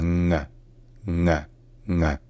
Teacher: Ensuite, deuxièmement, une deuxième difficulté principale, c'est que le NG en allemand, dans ce contexte-là, ce ne sont pas vraiment deux consonnes différentes. En fait, c'est deux consonnes qui sont prononcées ensemble en faisant un son nasal là où est fait le G d'habitude. C'est-à-dire qu'au lieu de faire N puis G, faites un N, un son nasal, là où normalement est fait le G.